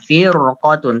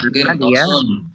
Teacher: Kalau misalkan apa namanya setelah huruf ro itu, ya, setelah huruf ro itu huruf isti'la, maka tetap dia dibacanya tebal